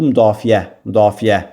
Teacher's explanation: müdafiə dedikdə vurğunun ədə olduğunu biz rahatlıqla görə bilərik